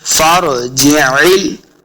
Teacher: फरजिल, जिल, आइन को तलफ़्फ़ुज़ के साथ पढ़ेंगे, यह आइन का साइन है, तो आइन का साउंड आना चाहिए, हा का साउंड नहीं आना चाहिए।